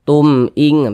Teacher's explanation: tumnya tuh jangan didengungkan, jangan dipanjangkan, pendek saja.